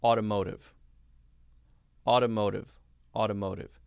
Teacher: notice that both of the t sounds for that one are light d sounds